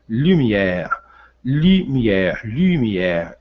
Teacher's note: I com som de U com som de I, arredondando os lábios em francês, fazendo o biquinho. E novamente um E acentuado fraco, com acento fraco para nós e forte para eles.